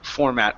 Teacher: the format as a verb and noun is always going to be format with the stress at the beginning